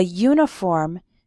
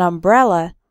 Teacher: the sound not the letter of the next word for example we say a uniform because uniform starts with a you sound but an umbrella because umbrella starts with an a sound a vowel sound